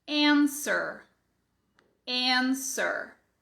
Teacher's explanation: fica claro que você não tem som de U.